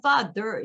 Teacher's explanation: fa는 강세를 받았고 너는 강세를 안 받았어요